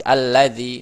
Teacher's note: Huruf lam jelas ya, satu makhraj. Makanya kalau lam sukun bertemu dengan lam langsung satu makhraj